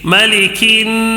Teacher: کیوں غنہ کر رہا ہوں؟ نون مشدد، نون کے اوپر تشدید ہے اس کے لیے